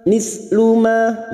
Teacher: ma fathah diikuti alif, 2 harokat kita panjangkan mat tabi'i